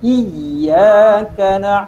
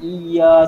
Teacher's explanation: kena tekankan pada huruf iya tu. Iyyaka bukan iya saja.